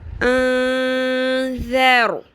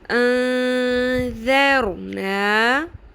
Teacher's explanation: حمزہ زبر نون، ذال زبر را، ذر، نرمی سے ادا کرے، ذال ہے، انذر، رو کو پر بھی کریں، نون کو ہم نے یہاں پر اخفا کرنا ہے غنہ کے ساتھ، چھپانا بھی ہے اور آواز کو لمبا بھی کرنا ہے۔ غنہ کا مطلب ہوتا ہے آواز کو آپ نے تھوڑی دیر ٹھہرانا ہے، ناک کی ہڈی میں لمبا کرنا ہے۔